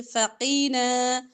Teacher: قاف موٹے حروف میں سے موٹا کریں گے